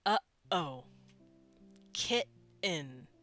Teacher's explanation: you know that little catch in your throat when you say uh oh or kitten that little stop we do that's a glottal stop uhoh kitten